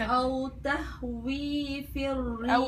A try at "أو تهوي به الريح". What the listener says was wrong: أو تهوي به الريح. إيش في الريح؟ من وين جبت الفي؟